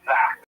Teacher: But it's possible that the doll can be pronounced as a voiced dental fricative